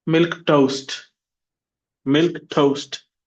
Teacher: Milk toast. Two syllables. The stress is on milk.